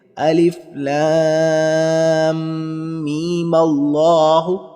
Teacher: ملا کر پڑھیں اور میم کا مد نہ کریں۔ میم پر جیسے ہم نے پہلے مد کیا تھا اس پر مد نہیں کریں گے۔